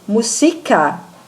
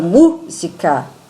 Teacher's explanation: se eu pronuncio música, é o si, mas se eu falo música, é o mu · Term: sílaba tônica